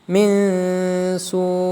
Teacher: Setiap nun sukun atau tanwin bertemu dengan salah satu huruf ikhfa, maka hukum bacanya disebut ikhfa. Membacanya dengan dibaca samar disertai dengan dengung.